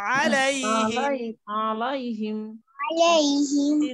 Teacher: আলাই আলাইহিমুন ডানে জবর ডানে ফাতাহা এটা কিন্তু মাদের হরফ না এটা হচ্ছে লিনের হরফ খুব নরম করে একটু দেরি করে